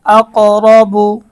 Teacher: রয়ের উপর জবর বা পেশ হইলে ওই রকে মোটা করিয়া পড়িতে হয়। এখানে আমরা যদি দেখি রয়ের উপরে জবর রয়েছে, এজন্য র মোটা।